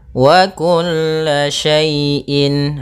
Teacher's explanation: harus jelas dalam pelafalannya karena izhar itu artinya jelas, halq dari tenggorokan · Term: izhar halqi